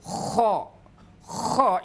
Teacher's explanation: KHO itu adalah adanya di ujung kerongkongan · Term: huruf KHO